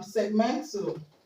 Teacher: the stress is going to be on men okay the second level from there